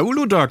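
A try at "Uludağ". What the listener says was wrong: Das heißt ja eigentlich Uludal. Aber das G hat ja noch so einen Zippel oben drauf.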